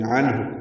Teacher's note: عنہ نون ساکن کے بعد ہا آنے کی وجہ سے اظہار ہے، عین وسط حلق سے ادا ہوگا، ہا اقصى حلق سے ادا ہوگا